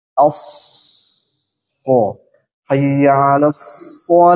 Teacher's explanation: tempatnya di ujung lidah bertemu dengan gigi seri bawah keluarkan hamusnya